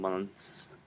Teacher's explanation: And the S sound, not the Z sound, but a S sound.